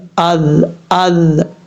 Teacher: جو ذال ہے وہ بغیر سیٹی کے ساتھ